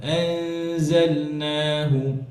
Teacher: واضرب لهم واضرب لهم مثل الحياة الدنيا كماء أنزلناه من السماء আনজালনা, যেন নুনের গুন্না জায়ের গুণা মোটা না হয়ে যায়। কেন? যা পাতলা হরফ, গুন্না পাতলা।